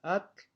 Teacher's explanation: este sufijo que es la consonante africada lateral, y entonces este va a aparecer en una serie de palabras que se caracterizan porque acaban en vocal.